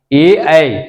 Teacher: कंठ तालु में कंठ और तालु के मेल से इस वर्णों का उच्चारण होता है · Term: कंठ तालुव्य वर्ण